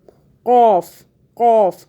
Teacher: اب یہ دیکھیں ہم نے جو قاف پڑھا اس کو موٹا پڑھنا ہے، باریک نہیں پڑھنا۔